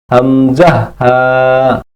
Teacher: 1 number মাখরাজ, হলকের শুরু হইতে উচ্চারিত হয়